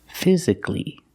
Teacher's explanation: the last syllable is a long e like green beans physically but the stress on the first syllable Fizz physically it